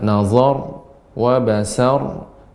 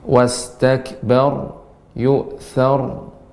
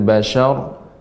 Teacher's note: Di sini catatannya, ya, kita akan banyak jumpai ra yang disukunkan karena waqaf dan sebelumnya huruf yang berharokat fathah, maka dibaca dengan tebal. Dan sifat ra adalah, ya, getarannya lembut dan sedikit. Kemudian, ya, sifatnya juga adalah bainiyah, sedikit mengalir.